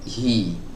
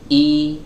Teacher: Kalau huruf H start awalnya itu nggak tertutup banget, tapi ada celah sedikit. Nah, kemudian kita kasih suara kasroh, hi ya, hi dijauhkan, hi, tapi start awalnya itu tidak menempel pita suaranya.